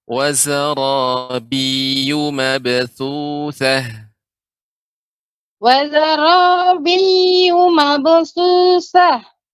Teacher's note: Yu-nya tidak dibaca panjang Ibu. Jadi ketika baca yu langsung ma.